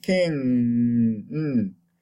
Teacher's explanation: So again, voiced, velar is the tongue and the back of the tongue and the velum approximate, but the velum drops down to meet the back of the tongue. So that is a voiced, velar, nasal.